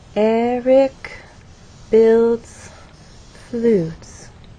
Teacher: show how our voice falls at the end of the statement on flutes · So there is still a change of pitch because there is word stress, but the overall pattern is falling intonation.